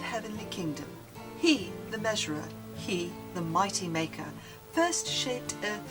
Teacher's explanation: Your analysis thereof: hear the lift on the stressed syllables. Hear the binding sounds, G, H, M, stitching the half lines across the caesura. No end rhyme, alliteration is the glue.